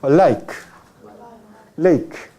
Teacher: Es casi mismo sonido que existe en la lengua española, lateral alveolar